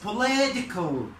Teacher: هنا هنعمل ستريس على ال LI تبقى بولي